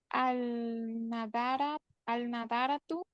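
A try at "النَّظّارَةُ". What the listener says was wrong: Ajá, ahí no se lee la LAM porque la NUN es solar, letra solar.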